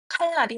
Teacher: 리을이 니은 앞에 오는 경우 칼날이 있습니다. 종성 리을 뒤에 이어지는 니은이 리을로 바뀌어 칼날로 발음됩니다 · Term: 유음화